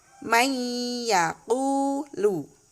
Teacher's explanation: nun sukun atau tanwin itu tidak dibaca, tetapi langsung masuk ke huruf berikutnya dengan cara mendengung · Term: idgham biguna